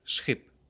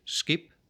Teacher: We do not say skip, we say schip, with the stop k shifting to a fricative ch